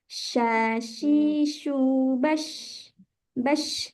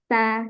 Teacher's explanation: tafasyi, yaitu tersebarnya udara pada seluruh mulut pada saat diucapkan. Sifat ini terdapat pada huruf shin.